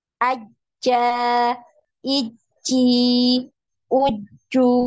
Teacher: huruf Jim ini tertahan juga ya suaranya ketika ditasydid ya karena tidak ada aliran suaranya tidak ada aliran suara tidak ada aliran nafas